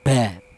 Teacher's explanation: Tapi untuk huruf ba dan huruf mim ini dihasilkan dari kedua bibir yang rapat. Kita bilang ba, rapat dulu.